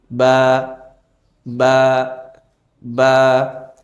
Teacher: বাটি হচ্ছে দুই ঠোঁটের ভিজা জায়গা হতে